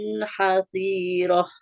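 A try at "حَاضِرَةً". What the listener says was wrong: Yang panjang. Yang panjang huruf H-nya. Karena fathah bertemu alif. Hadiroh.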